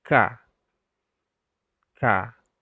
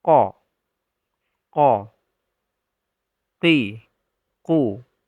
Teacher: Bagian pangkal lidah yang kita letakkan di langit-langit mulut, yaitu huruf qaf dan kaf. Mereka berbagi makhraj yang sama. Artinya, pangkal lidah menempel pada langit-langit mulut. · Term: huruf akar lidah